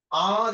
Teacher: আ যখন বলছে তখন জীবটা একদম নিচে